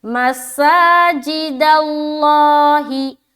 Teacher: لفظ اللہ کا لام کو ہم کیوں موٹا کر رہے ہیں؟ کیونکہ دال کے اوپر زبر آ گیا۔ · مسا میں سین میں کھینچیں گے اور آواز سیٹی کی طرح ہوگی